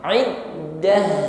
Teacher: Ta marbutah ketika waqaf maka kita ucapkan sebagaimana huruf ha, maka tampakkan sifat rakhawahnya. Alirkan bunyi ha-nya.